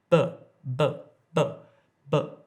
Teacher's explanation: when I say b, there's no air coming out